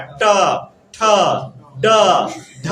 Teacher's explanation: मूर्धा के पास, मतलब मसूड़ा के पास, दांत से जस्ट ऊपर, मतलब तालू के नीचे, दांत के ऊपर बीच वाला हिस्सा · मूर्धा है। ट ठ का उच्चारण स्थान मूर्धा है।